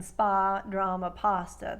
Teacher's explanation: parts of Queens and Long Island will make it the wider ah vowel sound, as in spa, drama, pasta.